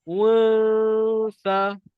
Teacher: Dia dengung dekat makhraj huruf seterusnya.